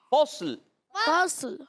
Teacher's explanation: صاد کو بھی ساکن رکھنا ہے، لام کو بھی ساکن کرنا ہے۔